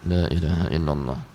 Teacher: Ini nggak gerak bibirnya, tapi suara bunyi karena memang huruf-hurufnya bukan huruf bibir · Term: bukan makhraj bibir